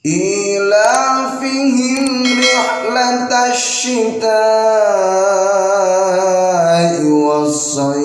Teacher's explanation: Hukum bacaannya ialah mad wajib muttasil karena ada mad tabi'i bertemu hamzah dalam satu kalimat. Pakai shin tebal, jangan pakai shad.